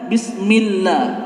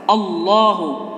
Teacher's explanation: Kalau bismillah itu lafzul jalalahnya tarkik, tipis. Kalau ini Allahu adalah tafhim, tebal.